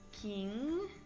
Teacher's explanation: for this sound we never pronounce the G consonant at the end